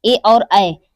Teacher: ए और ऐ हमारा जो है वो कंठ और तालु दोनों से मिलकर उच्चारित होता है। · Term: कंठ तालव्य